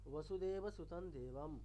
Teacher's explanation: যে বর্গের বর্ণ থাকবে সেই বর্গের পঞ্চম বর্ণ, তাহলে দ ত বর্গের বর্ণ, তার পঞ্চম বর্ণ হচ্ছে দন্তীয় নকার, তাহলে দন্তীয় নকার হয়ে গেছে